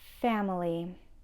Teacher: the schwa is the second syllable